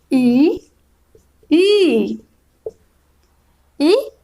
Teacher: ई ई ई का उच्चारण कर रहे हैं तो इसका उच्चारण स्थल है तालु। ई के उच्चारण में कौन सा जगह प्रयोग हो रहा है, तो तालु हो रहा है। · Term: तालव्य